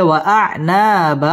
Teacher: ওয়াআনা মধ্য তবাই একালিফ টেনে পড়তে হবে